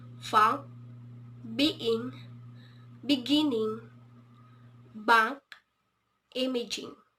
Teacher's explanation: the tongue is pressed at the soft palate and block the airflow. For example, funk, being, beginning, bank, imaging.